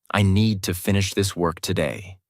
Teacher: Need, finish, work are strong. Other words are softer.